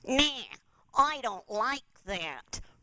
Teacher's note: Really squeeze. Some people call it a pinched voice or a squeezed voice.